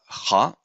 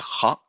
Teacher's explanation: when we say ha we are actually feeling that the base of the tongue is touching the soft palate